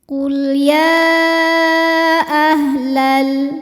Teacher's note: Alif dengan harakat fathah ini terdapat pada kata kedua yaitu ahla maka dibaca panjang y-nya boleh empat boleh lima harakat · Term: Mad Jaiz munfasil